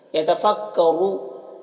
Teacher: یتفکروا، را کے اوپر پیش ہے تو را کو پر پڑھیں گے، اور یہاں پر واو مدہ ہے، ایک الف کے برابر کھینچیں گے۔ یہاں پر سکتہ ہے یعنی ٹھہر لیکن سانس نہیں توڑنا ہے۔